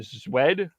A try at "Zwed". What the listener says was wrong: Sved? Sved. It's one of those Slavic names where the W sounds like a V of some sort.